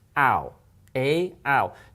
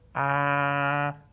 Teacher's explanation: Now, if you look in a mirror and do this, you'll notice what happens when you say ow. Ow. Your mouth moves. It's not a steady sound. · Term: diphthong